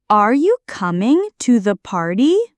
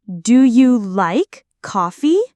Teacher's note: Yes, no questions. Rising intonation. Your voice goes up at the end.